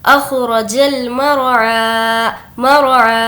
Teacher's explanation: इस रा को मोटा पढ़ेंगे क्योंकि रा साकिन से पहले ज़बर है